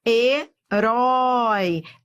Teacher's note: Herói é um ditongo e decrescente. Eu fui do forte pro fraco.